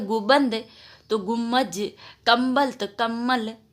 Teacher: मम्ब के स्थान पर मम की प्रवृत्ति दिखाई देती है